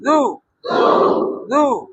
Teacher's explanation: জিহ্বার আগাটা সামনে দাঁতের আগায় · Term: জাল পেশ জু